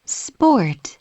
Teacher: p 발음이 s s 붙게 되면네 p 발음이 약간 S 영향을 받아서 브 발음이납니다 sport 그죠 sp sp 이렇게 발음 나는 거죠 자 전체 네번